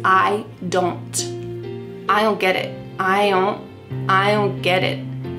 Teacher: We're changing the T to a D, ged, and then it is a stopped T.